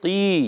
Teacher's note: قاف یا زیر قی، یا مدہ ایک الف کھینچنا ہے اور قاف کو موٹا رکھنا ہے. قاف زبان کی جڑ اور تعلق کے نرم حصے سے قاف ادا ہوتا ہے